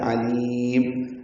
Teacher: عین وسط حلق سے ادا ہوتا ہے، لام باریک پڑھا جاتا ہے.